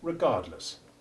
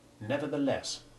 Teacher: the unstressed ending of regardless has the short e2 iv sound and the stressed ending of nevertheless has short e1